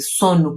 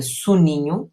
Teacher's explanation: Sono, o O lê-se com alguma abertura, soninho lê-se completamente enfraquecido, baixo, como com o som U. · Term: redução vocálica